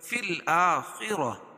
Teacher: فی الآخرہ را پور پڑھی جائے گی اور خا کو بھی پور پڑھیں گے